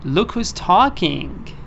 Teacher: They put the stress on ta. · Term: fixed melody